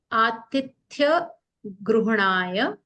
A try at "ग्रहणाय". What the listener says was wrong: ग्रहणाय, यहाँ पे गृह नहीं है, ग्रहणाय है